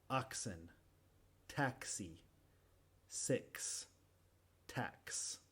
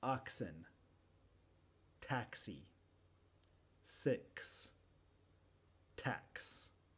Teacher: con la X normalmente después del sonido K tenemos el sonido S